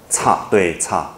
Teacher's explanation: 5.2是齿擦音，擦，对，擦，有没有卷舌？没有卷舌